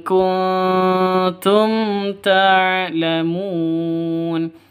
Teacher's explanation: mim mati bertemu dengan ta jelas terang karena izhar